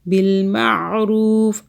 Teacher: عین کو حلق سے پڑھیں